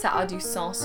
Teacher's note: So you don't pronounce the S, it's spelled the exact same way. But when it's the noun, ça a du sens, you pronounce the S.